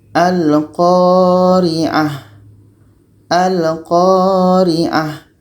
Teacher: Sedangkan huruf yang terakhir ta marbutah, maka kita tetap matikan. Maka ta marbutah ketika berhenti menjadi huruf ha.